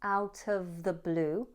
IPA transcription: aʊt əv ðə bluː